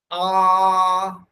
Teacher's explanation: আবার আ বলার সময় জিভ একেবারে নিচের চোয়ালের মধ্যে শুয়ে থাকে। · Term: নিম্ন স্বর